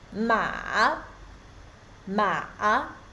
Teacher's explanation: the third tone starts low and deep down, and then rise again.